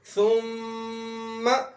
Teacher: ثم کی میم کے اوپر شد آئی ہے، اس لیے اس حرف کی آواز کو بھی ناک میں لے جایا جائے گا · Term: غنہ